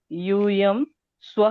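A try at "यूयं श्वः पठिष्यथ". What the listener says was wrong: बहुत सही, एकदम सही है।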